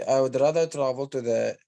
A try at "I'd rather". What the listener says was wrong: No, it's not I would. It's I'd. Do you understand? I'd rather. Most English speakers use contractions, as you mentioned, but it's not I would. It's I'd.